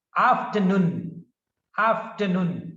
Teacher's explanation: in these words the stress is on the third syllable